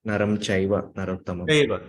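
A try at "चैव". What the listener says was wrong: Well, your way you're saying it is still not as high as some people say. You're saying chaiva, and some people say chaiva.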